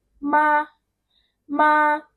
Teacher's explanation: The first one m you see is so straight flat. It doesn't fluctuate. It doesn't go down. It doesn't go up. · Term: first tone